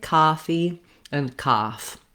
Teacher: one of the solutions if you're a new york speaker is simply to use the ah vowel in these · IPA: /ɑ/